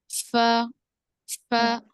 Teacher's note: दोनों दांत नीचे के होंठ को लगेंगे और सामने वाले।